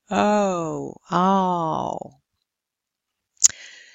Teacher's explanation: Then the back closing diphthongs, then it's the back of the tongue that moves from a rather open to a closer position.